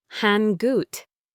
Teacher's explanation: Notice how hang out connects with linking